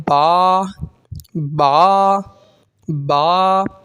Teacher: बा दोनों होठों के तर हिस्से से अदा होता है दोनों होठों के अंदर के हिस्से को आप आपस में मिलानी